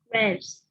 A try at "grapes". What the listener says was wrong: Okay, good.